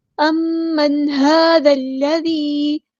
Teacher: ہا پر کھڑا زبر ہے، یعنی مد اصلی ہوگی، ایک الف کے برابر لمبا کریں گے۔